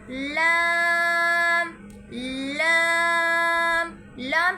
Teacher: زبان کا کنارہ اور دوحیکہ سے ثنایا تک کے مسوڑوں سے ادا ہوتا ہے